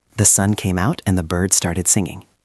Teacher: Notice how we link the sounds. We don't say and separate from the words. It often sounds like n.